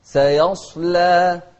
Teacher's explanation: السين مرققة والصاد مفخمة واللام أيضا مرققة